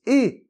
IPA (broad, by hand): e